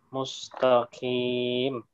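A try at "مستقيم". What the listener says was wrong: Nah, qi. Bukan kim. Dia tidak ada bukan huruf hamas, jadi tidak ada udara yang masih mengalir. Tapi qim. Ihdinas siratal mustaqim. Qim.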